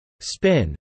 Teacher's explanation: a third sound which is neither voiced nor aspirated, which occurs in English only as an allophone of /p/